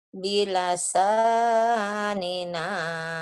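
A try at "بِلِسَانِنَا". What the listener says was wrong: bilasa salah. Bukan bilasa Ya, cuman salah baris sedikit, salah. baca bilasa, bukan bilasa, bilisan dengan lisan. Bilisanina.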